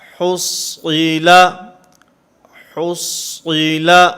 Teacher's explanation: صاد کو پر پڑھیں گے، ہا کو بھی باریک پڑھیں گے، لام کو بھی باریک پڑھیں گے